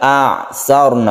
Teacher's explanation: ro-nya ini, karena ro-nya ini sebelumnya ada fathah, ini dibaca tebal atau istilahnya tafkhim atau mufakhom. Ro' yang tebal itu karena sebelumnya ada huruf yang berharokat fathah.